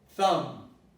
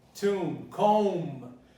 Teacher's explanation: Well, you can see very clearly that there is a ba here. But the ma and the ba are very similar. So the ba is eliminated. It's eliminated totally, and you only pronounce up to the ma.